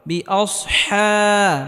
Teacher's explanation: হাকে হালকা গলার মধ্যে চাপ দিয়ে উচ্চারণ করতে হবে